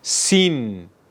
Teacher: dilimizin ucunu alt dişimizin ortasına değdirerek Keskin bir şekilde çıkar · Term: sin harfi